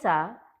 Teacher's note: सा जब आप बोलते हैं तो उसमें दांत में आकर जीभ लगती है, तो इसलिए इसको हम दंत्य सा कहते हैं।